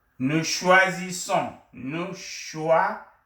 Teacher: In between two vowel sounds, the S becomes a Z sound.